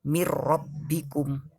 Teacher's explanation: dimasukkan ke huruf depannya. Jadi nunnya tidak dibaca. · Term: idgham bila guna